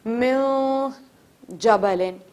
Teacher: دوسری چیز ہے کہ جب بھی حروف حلقی آئے ان کے علاوہ, اور یہ جو با اقلاب کا قاعدہ آج میں نے آپ کو بتایا, ان تمام تر حروف کے علاوہ اگر آپ کو کوئی حرف نظر آتا ہے قرآن المجید میں تنوین اور نون ساکنہ کے بعد, تو نون کی آواز کو غائب تو نہیں کریں گے مگر تھوڑا سا چھپا دیں گے. لائک نون کو نون غنہ بنا دیں گے.